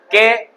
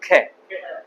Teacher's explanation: लेकिन जैसे ही आपने ख का उच्चारण किया इसका मतलब आपकी जो स्वास है वो बाहर ज्यादा मात्रा में निकलती है